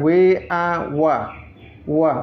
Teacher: ini ada di makhraj syafatain ya, dua bibir tapi tak bertemu dua bibirnya, mendekati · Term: huruf wa